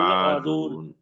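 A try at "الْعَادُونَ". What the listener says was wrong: आदून आदून आ को लंबा करें, आदून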